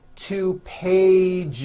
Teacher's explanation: It's not two pages, unvoiced, no. It's two pages with a voiced Z. Even though you spell the word like this, in American English you pronounce the word like this.